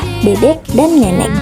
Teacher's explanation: vokal E dengan proses pembentukan tengah bawah tak bundar, depan